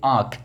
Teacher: हवा जो है मुख से निकालता है और नाक से भी निकलता है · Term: अनुनासिक